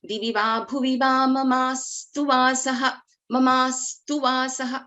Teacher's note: This sa is, this is the first consonant in this Samyuktaksharas too. So sa is getting doubled. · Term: doubling of consonants